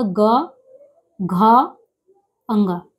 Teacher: वर्ग का जो तीसरा, चौथा, पांचवा वर्ण है उसको बोलने में कंपन हो रहा है। घोष घोष यानी कंपन हो रहा है।